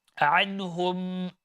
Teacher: Make sure that the ayn is not being changed into hamza